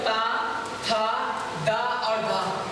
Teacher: तो ता वर्ग का उच्चारण स्थान दंत, कौन सी, दंत।